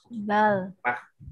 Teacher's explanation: ujung lidah bertemu dengan ujung gigi seri depan